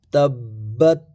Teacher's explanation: تابا زبر تبا تا زبر بت، تابا زبر تبا تا زبر بت، تبت، تا پر زبر ہے، یہ تا ہے نہ کہ طا، تا ہے، باریک پڑھا جائے گا، 2 نقطوں والا تا ہے، تا پر زبر ہے، اور تا کے بعد با ہے، با پر زبر ہے، اور با پر زبر کے ساتھ ساتھ با پر شد بھی ہے، جس کی وجہ سے سختی کے ساتھ زور دے کر کے پڑھا جائے گا با کو